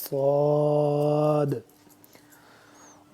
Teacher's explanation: صاد کو سخت اور موٹا کر کے پڑھنا ہے